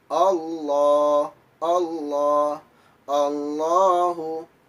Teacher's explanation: Allah sebagaimana kita telah bahas tadi bahwa apabila ada lam jalalah sebelumnya ada harokat fathah maka nama hukumnya adalah lam yang dibaca tebal atau lam tafkhim dan bunyinya adalah loh